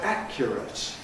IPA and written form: ˈækjərət (accurate)